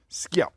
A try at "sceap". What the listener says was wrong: It's actually pronounced sheep. S and C in Old English makes a modern SH sound. Sheep. So, but sheep.